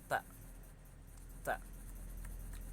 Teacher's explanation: Lalu huruf yang ketiga itu ada huruf ta, di mana punggung ujung lidah dan pangkal dua gigi seri muka yang atas